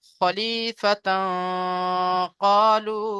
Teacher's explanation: তানবিনের আওয়াজকে একালি পরিমাণ ইকফা করে পড়বো।